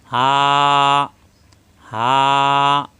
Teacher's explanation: হা করে উচ্চারণ করতে হবে মুখ খোলা থাকবে কন্ঠনাল শুরু থেকে